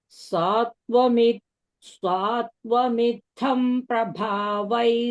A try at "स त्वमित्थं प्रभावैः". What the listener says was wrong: Satva, swa is not there. Satvamitham prabhavais.